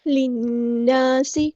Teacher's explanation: لام کو ہم نے نون کے ساتھ ملا دینا ہے ، للناس، نون پہ غنہ زمانی ہو رہا ہے، ایک الف